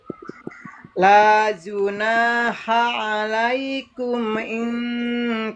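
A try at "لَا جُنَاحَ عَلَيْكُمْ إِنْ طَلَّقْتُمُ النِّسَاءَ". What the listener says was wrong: Nggak boleh berhenti di situ. Nggak boleh berhenti di situ. Berhentinya kalau mau berhenti au tafridu lahun gitu.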